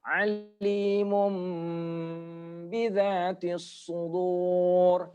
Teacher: Alimun bidzatis sudur, tapi tanwinnya ketemu dengan ba, maka diubah menjadi mim.